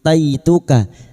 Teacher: Hamzah yang bertemu mat, hamzah yang berharakat alif kecil di atas mat badal, 2 harakat kita panjangkan. Ataituka, fathah bertemu ya sukun kita lunakkan huruf lin